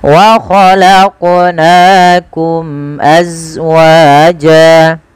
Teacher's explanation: Pantulkan lafal qaf karena dia qalqalah